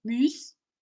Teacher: you're not going to use the yod, and you're going to do a fronted oo sound with your tongue forward. So to say fume in French is fume, fume.